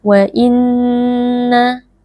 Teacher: Nun tasdid wajib dibaca dengan berdengung